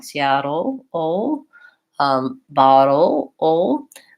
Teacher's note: thinking about the syllabic L as being the dark L at the end of a syllable